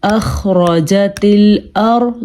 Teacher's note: ہم نے خا کے مخرج کا خیال رکھا ہے، اور پھر ہم نے خا کو پر پڑھا ہے کیونکہ خا حروف مستعلیہ میں سے ہے